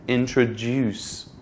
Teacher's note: the word introduce is pronounced with a stress at the end so it sounds like this introduced so you can just say